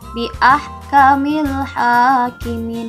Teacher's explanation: Di situ ada alif lam yang Ibu baca jelas, itu disebutnya si alif lam qamariyah. Beda ya dengan tadi alif lam syamsiyah.